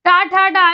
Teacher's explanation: टा ठा डा यानी ये हमारे मूर्धा से हो जाएंगे, टा वर्ग का है।